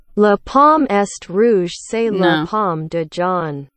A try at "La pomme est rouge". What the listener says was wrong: No, the T is silent. So bad.